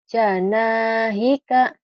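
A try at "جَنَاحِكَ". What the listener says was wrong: Hah? Apa sanahika? Ja. Tapi di mulutnya sanahika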